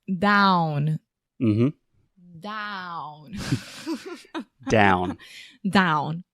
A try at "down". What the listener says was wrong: you're still having a little bit of nasalization